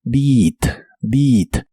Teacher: la e a de esta palabra se pronuncia como una I larga o doble